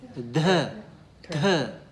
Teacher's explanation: So we have more aspiration. We use more h sound.